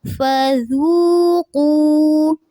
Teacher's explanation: ذال کو نرمی سے ادا کریں گے، قاف کو پر رکھیں گے